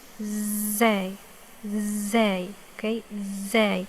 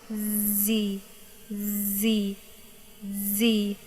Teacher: It's produced by the tip of the tongue, should be close to the upper backside of the top front teeth. The tongue is kept tense. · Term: حرف الزاي